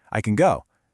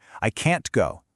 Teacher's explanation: Can is usually really soft and quick. Like, I can go. But can't has this really strong T sound at the end.